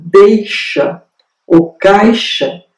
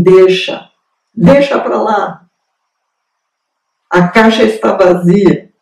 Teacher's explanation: o que ocorre, em geral, com esses dois ditongos, quando eles ocorrem no meio da palavra, é uma deditongação.